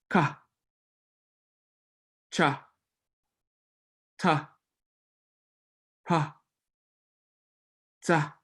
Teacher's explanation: we are now aspirating the sound. So you should feel a little puff of air come out when you make these sounds.